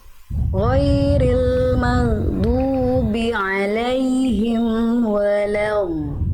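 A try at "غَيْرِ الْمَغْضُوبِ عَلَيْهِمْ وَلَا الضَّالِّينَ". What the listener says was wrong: Bagus, dotnya panjang, mad lazim 6 harokat, harus 6 harokat Bunda. Ghairil maghdubi 'alaihim waladdallin. Panjangkan 6 harokat. Lagi Bunda, kurang panjang.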